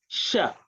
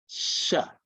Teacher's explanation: the tongue actually is parallel to the roof of the mouth and you produce the word Sha. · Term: palatal sound